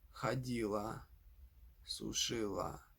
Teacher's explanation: the feminine form is stressed on the final a, while the other forms are stressed on the previous syllable. For example, ходила, сушила.